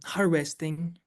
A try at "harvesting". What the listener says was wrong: He just has a problem with the V and the W.